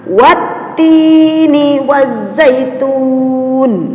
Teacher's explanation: harus dibaca as-syamsiah atau dibaca lebur · ini alif lam nya tidak dibaca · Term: Idgham Syamsiah